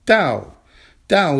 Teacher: is a four tone character it's a falling tone